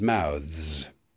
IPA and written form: maʊðz (mouths)